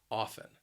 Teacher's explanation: sound often now this word can be a bit confusing because you're not going to hear that T it is a silent letter a silent T